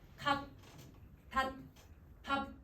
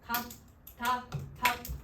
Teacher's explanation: 끝을 빨리 이렇게 끊어버리듯이 소리를 내잖아요. 그게 빨리 닫아버리는 소리예요. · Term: 평파열음